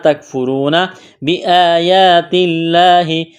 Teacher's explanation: لفظ اللہ کے نام سے پہلے زیر ہے تو لفظ اللہ کے نام کو باریک کرنا ہے